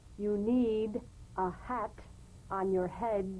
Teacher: play the H gently without excess breath feels nothing more than a slight hesitation before the vowel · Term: gentle H